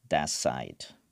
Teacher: “that side” it will become “thas side” like “t” becomes “s”